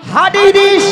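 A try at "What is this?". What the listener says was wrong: মাসি ওটা হাটিস দিস না, বলো হোয়াট ইজ দিস।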